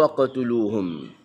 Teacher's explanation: Jangan baca waqtuluhum dia jadi berat. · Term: qalqalah sughra